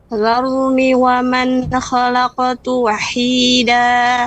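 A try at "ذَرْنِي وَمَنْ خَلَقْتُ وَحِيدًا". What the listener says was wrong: Nah, ini ni-nya ketinggalan lagi. Ya, tadi bacanya cepat. Zarni wa man, harusnya zarni wa man.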